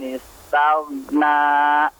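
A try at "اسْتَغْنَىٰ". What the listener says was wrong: Afwan, kepanjangan ya. Taghna. Ah, 2 harakat saja. Taghna. Na.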